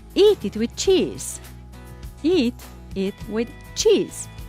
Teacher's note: Eat and cheese got the stress, but with it doesn't have the stress.